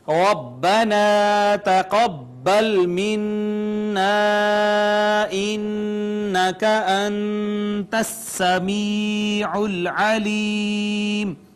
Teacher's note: را مفتوح ہے، اس وجہ سے اس کو مفخم پڑھا جائے گا ، الف مدہ ہے، اس کے بعد نون مشدد اور میم · کو مفخم پڑھا جائے گا، الف مدہ ہے، اس کے بعد نون مشدد اور میم مشدد پہ غنہ ہوتا ہے واجب، لہٰذا ہم نے غنہ کیا ، اس کے بعد حرف مدہ تھا، اس پر مد آ